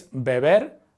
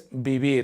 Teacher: the B and the V sound exactly the same